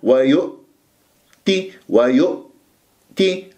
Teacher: إذا لم أقفل الأوتار الصوتية جيدا راح تتقلقل معايا الهمزة، ويؤ، ويؤ، ويؤتي، خطأ، أو ويؤ، عدة همزات، إذا ويؤتي، ويؤتي، هكذا. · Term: الهمزة الساكنة